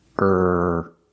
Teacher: The T is a stop T, so stop the air.